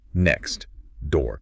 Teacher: To make that T sound and then immediately make a D sound, your tongue has to stop, reset, and start again.